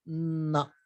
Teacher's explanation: your tongue is behind the teeth, then but you add a nasal, it becomes na.